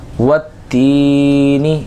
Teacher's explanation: تا یا زیر تی میں یا مدہ ہو رہا ہے، بس اسی ایک الف کو، اس کو جو ہے وہ ایک الف کے برابر کھینچ کر پڑھیں گے